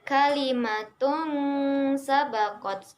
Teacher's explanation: Di situ ada tanwin bertemu dengan huruf sin, maka dibaca samar dan berdengung. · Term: ikhfa